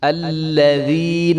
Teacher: الخاشعین، الذین، تو یہاں پہ یا مدہ ہے، یا کے اوپر یا ساکن ہے اور یا ساکن سے پہلے دیر ہے، تو اس کو جو ہے ایک الف کے برابر لمبا کریں گے ، الذین، اور دال کو جو ہے وہ بریک ادا کریں